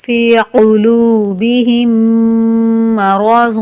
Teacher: میم ساکن کے بعد میم کا ادغام ہوگا اور میم مشدد کا غنہ ہوگا۔ قلوبہم مرض، ضاد پہ اخفا کریں گے۔